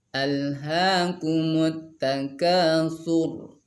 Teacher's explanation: Ayat pertama alha dengan ka, itu 2 harakat, nggak boleh lebih. Tidak boleh dibaca alhaakumut takatsur. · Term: mad asli 2 harakat